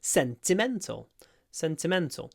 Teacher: I kind of stressed the first and the third syllable